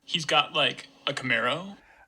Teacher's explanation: that's syntactically a statement, but I have a rising F0 at the tail end. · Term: uptalk